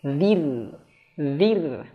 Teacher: ra-nya sukun sebelumnya ada huruf zal kasrah nih kasrah, maka tipiskan.